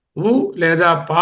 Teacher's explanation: ఉ పా రెండిటికి పెదాలు ఉండి తీరాలి, తాకి తీరాలి, గుండ్రంగా మారుతాయి. ఊ అన్నప్పుడు పెదవుల సహాయం లేకుండా ఊ అని చూడండి, ఊ పా అనలేము. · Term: ఓష్టములు